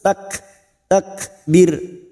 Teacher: Kaf sukun memiliki sifat hamz